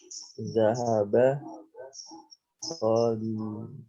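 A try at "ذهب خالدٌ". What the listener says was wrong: Ya, kalau ditanwin jangan ragu. Tanwin kan, yang nggak ditanwin jangan ditanwin. Ulangi, dahaba. Tanwin kan. Khalidun.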